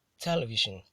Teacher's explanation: The word television is not stressed on the penultimate syllable. So the word is stressed on the first syllable and is pronounced as television.